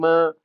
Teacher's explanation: जिनके उच्चारण में हवा का प्रमुख अंश कहाँ से निकलता है? नाक से निकलता है। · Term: नासिक